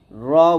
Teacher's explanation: র বলতে হবে, মোটা করে বলতে হবে হরফটা।